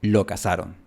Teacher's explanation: En América no tenemos el fonema th, solo el fonema s, así que estas dos frases se pronuncian exactamente igual, lo cazaron. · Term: ceseo